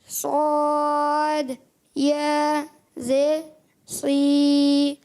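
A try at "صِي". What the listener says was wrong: صا موٹا کریں، صا، اور موٹا کریں، صا۔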